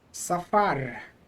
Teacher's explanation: So the pronunciation is normal with the accent on the last syllable.